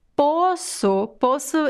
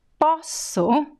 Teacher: the only difference between these two words is the open and closed sound